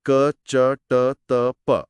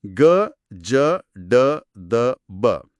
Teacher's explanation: ಇದು ಏನಂತಾರೆ ಘೋಷ ಮತ್ತೆ ಅಘೋಷ ವ್ಯಂಜನಗಳಿಗೆ ಸಂಬಂಧಿಸಿದ್ದು ಓಕೆ ಸಿಂಪಲ್ ಆಗಿ ಹೇಳೋದಾದರೆ ಅಘೋಷ ಅಂದ್ರೆ ಕ ಚ ಟ ತ ಪ ಇವನ್ನ ಹೇಳುವಾಗ ವೋಕಲ್ ಕಾರ್ಡ್ಸ್ ಜಾಸ್ತಿ ವೈಬ್ರೇಟ್ ಆಗಲ್ಲ ಹ ಆದರೆ ಘೋಷ ಅಂದ್ರೆ ಗ ಜ ಡ ದ ಬ ಇವನ್ನ ಹೇಳುವಾಗ ವೈಬ್ರೇಟ್ ಆಗುತ್ತೆ